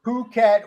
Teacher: it's Phuket with the uh emphasis on the second syllable